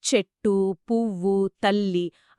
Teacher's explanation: తెలుగు దాదాపు ప్రతి పదాన్ని అచ్చుతో ముగించి ఒక సంగీతాన్ని సృష్టిస్తుంది. అందుకే ఇటాలియన్ ఆఫ్ ది ఈస్ట్ అంటారేమో బహుశా అందుకేనేమో చెట్టు పువ్వు తల్లి అన్ని అచ్చుతోనే ముగుస్తాయి.